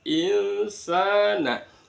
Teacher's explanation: Dibaca bacaan ikhfa hakiki. Samar-samar di tengah-tengah antara huruf nun disukun sama sin. Bukan nun ditekan tapi tengah-tengah antara nun sama sin. Sa-nya ada sin di fathah bertemu dengan alif, namanya bacaan mad tabi'i.